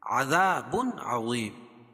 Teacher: یہاں اظہار حلقی ہوگا کیونکہ تنوین کے بعد حروف حلقی کے 6 حرفوں میں سے عین ہے